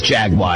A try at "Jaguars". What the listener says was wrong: There's no W in there. There's no I.